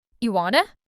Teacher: The do just disappears entirely. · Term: vanishing words